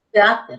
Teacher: Al decir cráter, mayor fuerza de voz en la penúltima sílaba